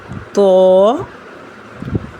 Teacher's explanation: जुबान की नोक को सामने वाले दो दांतों की जड़ से लगाकर जबकि जबान के पिछले हिस्से को ऊपर की तरफ बुलंद करते हुए पढ़ेंगे और इसको मोटी आवाज में पढ़ा जाएगा।